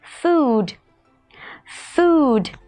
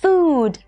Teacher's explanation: chúng ta dễ dàng nhận ra được rằng đây là âm u dài. Vậy đối với âm này thì mọi người kéo dài hơi ra nhé.